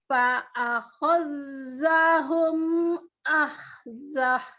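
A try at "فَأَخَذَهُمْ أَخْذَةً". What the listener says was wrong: Bagus, tapi zal yang di sini nggak ada tasdidnya.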